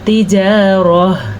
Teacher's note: جب ہم وقف کریں گے تو تا ہا بن جاتی ہے